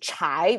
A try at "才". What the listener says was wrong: without h that means uh a flat tone without without uh the curling of the tongue thai instead of chai